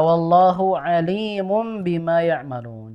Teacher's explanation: Jadi alim yang panjang di lamnya ya bukan alimun bukan alimum bima tapi alimum bimaa ya'malun begitu jadi bukan alim tapi alim ini maknanya berbeda ya kalau alim itu mengetahui.